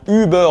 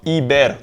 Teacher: Le son ü, qui soit court /ʏ/ ou long /yː/, équivaudra en yiddish à un i /ɪ/.